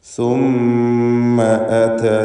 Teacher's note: ഹംസ വ്യക്തമായി മഖ്റജിൽ നിന്ന് ശിദ്ദത്തോടെ ഉച്ചരിക്കണം എന്ന് നേരത്തെ സൂചിപ്പിച്ചതാണ്.